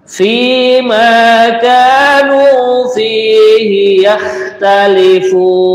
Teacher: pengucapan kha ini kalau gampangnya itu kayak sedikit ada suara ngorok